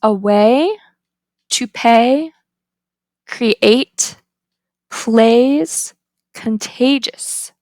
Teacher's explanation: the height is high mid front unrounded and tense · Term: dip thong, diphthong